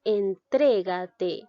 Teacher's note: En esta palabra observamos que la mayor fuerza de voz recae en la sílaba tre. Por lo tanto, a este se le denomina sílaba tónica.